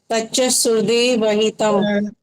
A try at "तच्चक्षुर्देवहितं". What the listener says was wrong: तच्चु कहाँ से आ गया? सु कहाँ है यहाँ पर?